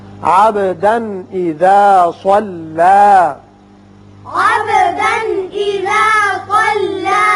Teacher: تنوین کے بعد حمزہ بشکل الف ہے، یہاں اظہار حلقی ہوگا